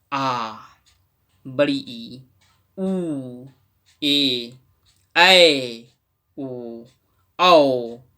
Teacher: दीर्घ स्वर आ, बड़ी ई, उ, ए, ऐ, ओ, औ उच्चारण में दोगुना समय लगता है, इसलिए इसे हम लोग दीर्घ यानी बड़ा स्वर कहते हैं